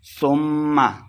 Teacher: ثم میم مشدد ہے، غنہ کر کے پڑھیں گے